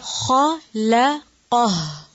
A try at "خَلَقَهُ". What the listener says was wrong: لام کو موٹا نہیں کریں گے خا اور قاف کو کریں گے